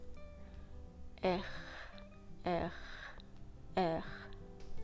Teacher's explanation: And now simply apply the sound R, which I told you about at the beginning of this video. So tip of the tongue down and back of the tongue really close to the palate, but not touching it. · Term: French sound R